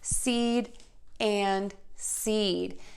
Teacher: We're then going to move to that long E sound by smiling, and your tongue is high and flat in your mouth. And then end with the D.